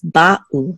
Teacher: There should be a distinct pause between the two syllables